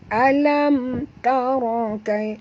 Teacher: Alam mim mati bertemu ta, tak boleh dengung, izhar syafawi lagi, ya, bacaannya terang tanpa dengung.